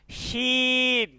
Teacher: শক্ত সিন করে, বাতাসটা মোটা করে বের করেন